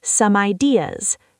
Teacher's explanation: The M sound grabs the I.